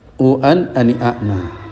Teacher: u itu panjang ketemu an, berarti panjang ketemu hamzah, timbullah mat wajib.